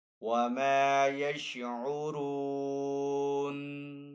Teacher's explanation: واو مدہ ہونے کی وجہ سے را کو تھوڑا سا کھینچ کر ادا کریں گے، وقف تام کی علامت ہے، تو نون کو یہاں پہ ساکن کریں گے۔